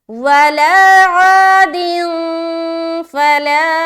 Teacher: 2 ज़ेर की तनवीन के बाद हर्फ फा आ रहा है, तो यहाँ पर हमें इख्फा करना है।